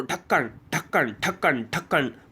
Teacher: भाई उत्क्षिप्त व्यंजन यह हो जाएगा तो यह क्या है कि बहुत झटके के साथ जब जीव नीचे आती है तालू को छूते हुए वही उत्क्षिप्त व्यंजन है